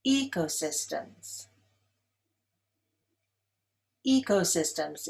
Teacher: Ecosystems is stressed on the first syllable.